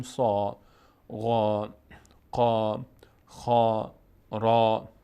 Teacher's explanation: یعنی در هنگام تلفظ این حروف با صدای آ، دهان به سمت بالا باز میشه. میشیم مثلا میگیم سا، غا، قا، خا، را، به این شکل خوانده میشه. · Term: پر خوانده میشن